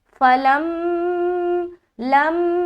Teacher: تو یہاں پر ہم لام کو میم سے ملا رہے ہیں، لام میم زبر لم، میم الف زبر ما۔ اب چونکہ میم کے اوپر شد ہے تو غنہ بھی کرنا ہے